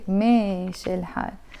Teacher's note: there is a meme and an alif, but in Lebanon we pronounce it e